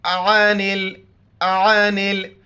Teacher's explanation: عین کو گلے سے ادا کریں گے، نون کو لام کے ساتھ ملائیں گے، بیچ میں الف کو نہیں پڑھیں گے